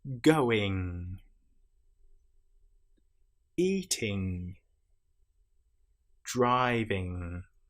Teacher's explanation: You will feel the vibration in your nasal cavity again in the middle of your head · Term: nasal sounds